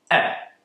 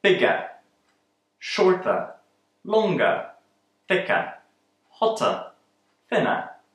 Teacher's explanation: the ER at the end of these adjectives is usually pronounced as a weak sound our famous schwa